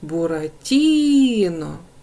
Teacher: наголос падає в нас на третій склад Отже третій склад наголошений наступне завдання Визначте які слова заховалися у